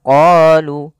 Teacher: kita memanjangkan huruf qa sepanjang 2 harakat karena pada lafal qa ini ada bacaan mad tabi'i.